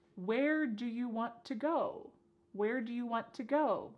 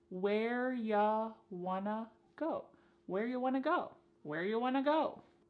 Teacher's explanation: You becomes y and want to becomes wanna.